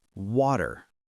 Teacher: Many learners say water with a strong T, but in American English, it's softer